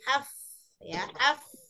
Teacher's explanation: Ya, jadi yang huruf fa itu makhrajnya bibir bawah bagian dalam dan ujung gigi sari atas. Maksudnya bibir bawah bagian dalam itu ya ditempelkan, dipertemukan dengan ujung gigi sari